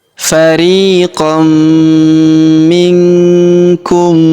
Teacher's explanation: kita leburkan huruf mim yang sukun ini ke huruf mi yang berharakat tasydid. Kita tahan dan kita tekan serta kita dengungkan dua sampai harakat.